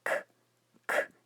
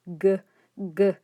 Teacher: a k is unvoiced and a g is voiced. · if you say k, k, you don't feel any vibrations, but if you say g, g, there are some vibrations, so that's what makes it voiced.